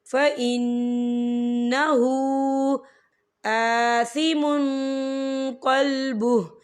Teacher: وَلَا تَكْتُمُوا الشَّهَادَةَ وَمَن يَكْتُمْهَا فَإِنَّهُ، یہ دیکھیں فَإِنَّهُ، نون مشدد ہے، یہاں پر غنہ بھی ہوگا اور ہا کے اوپر الٹا پیش ہے اور اس پر چھوٹی سی مد بھی ہے، تو ہم اسے 4 حرکت کے برابر کھینچ کے پڑھیں گے